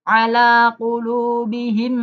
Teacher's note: Meme yang pertama yang sukun dimasukkan Meme yang kedua yang hidup dan kemudian didengungkan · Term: idgham mimi